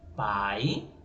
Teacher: aqui se a é uma vogal e esse é uma semivogal